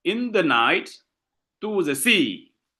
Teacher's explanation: you have two unstressed syllable followed by one stress syllable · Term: anapestic